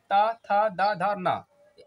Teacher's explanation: यहां पर आपकी जो जीभ है ना आपकी दांत में टच होगी